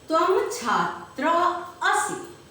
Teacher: यहाँ अनुस्वार को संस्कृत भाषा में म उच्चारित करते हैं, म बोलते हैं।